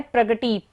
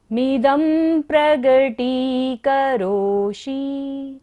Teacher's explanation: द के ऊपर बिंदी है और बाद में क्या है प्रगति, प वर्ग है, तो क्या होगा बिंदी का उच्चारण म। मिदं प्रगटी करोषि, ट पर बड़े ई की मात्रा है, तो इसलिए हमने लंबा लिया है।